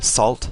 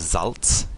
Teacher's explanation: Salt in English, we have T to a Ts, becomes Salz in German.